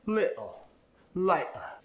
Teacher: You replace that medial T with kind of an uh-oh sound. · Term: glottal stop